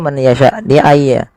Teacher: Ya, ketiga-tiganya dibaca dengan sama, yaitu memasukkan nunnya kepada huruf ya, dan hukumnya yaitu idgham bi gunnah